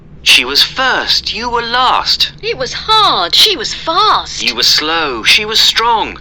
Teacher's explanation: usually was and were in the middle of the sentence, they are usually unstressed. We don't say was or were.